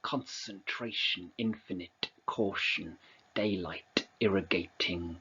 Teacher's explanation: Okay, so in particular, you've got these t and k sounds, also an n sound as well. But there are lots of plosives, the t and the k.